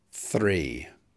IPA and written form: θriː (three)